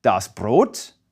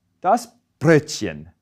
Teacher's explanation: the O vowel also moves forward in your mouth when it's umlauted.